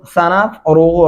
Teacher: रा मोटा और पुर करके पढ़ेंगे